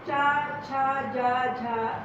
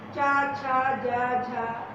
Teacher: और ये जो आपका तालु है ना, चा छा जा झा, ये ऊपर जो आपका तालु है, ऊपर जो है मुंह में जो आपका ऊपर है, ऊपर वाला भाग जो है, ऊपर का मुंह में जो छत है तालु, वहां से निकलता है ऐसे।